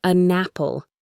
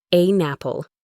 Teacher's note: We connect them as if they were one long word. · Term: linking